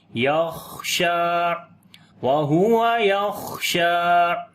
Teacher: خا کے اوپر ہمس بھی کریں گے، سانس بھی جاری ہوگا، یا اور آواز کے اندر پستی آئے گی، ٹھیک ہے، کمزوری، یخشیٰ، وَهُوَ يَخْشَىٰ فَأَنتَ عَنْهُ تَلَهَّىٰ، فآتا نون ساکن کے بعد اختا ہے، اخوا کریں گے، باریک اخوا ہوگا.